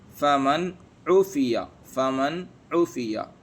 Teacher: نون کو بغیر غنہ کے صاف صاف پڑھیں گے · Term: اظہار حلقی